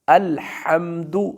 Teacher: یہ ہا ہے جو گلے کے درمیان سے ادا ہوتا ہے، اس کو الحمد کہتے ہیں۔